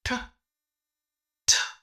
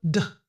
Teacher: दोनों को बोलने का जो पोजीशन है वो सेम ही होता है। ठ होता है वॉइसलेस और ड होता है वॉइस।